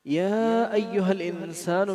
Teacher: عَلِمَتْ نَفْسٌ مَا قَدَّمَتْ وَأَخَّرَتْ یا ایہا الانسان میں یا کو اس میں مد ہے لمبا کریں گے اور ہا کو حلق کے آخری حصے سے